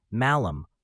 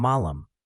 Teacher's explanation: Latin malum with the short one was different from malum the long one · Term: short and long vowels